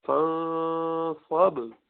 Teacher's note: با قلقلہ فوراً بند ہوا، شدید ہے لیکن قلقلہ کیا جائے گا اس پر